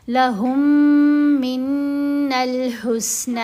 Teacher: میم ساکن ساتھ ہی میم مشدد، تو میم کا ادغام ہے. اب جو ساکن میم ہے وہ علیحدہ سے نہیں پڑھی جائے گی، بلکہ ہا کو مشدد میم کے ساتھ ملایا جائے گا اور غنہ کیا جائے گا